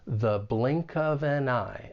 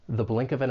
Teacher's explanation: we're going to use that weak 'the' with the schwa sound. And then link those final four words, the blink of an eye.